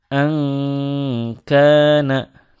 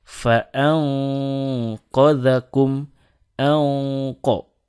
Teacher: Pun kalau bertemu kap, ini ditipiskan. Angkana, tipis. Sedangkan kalau bertemu qaf, fa'anqadhakum, anqo, ditebalkan.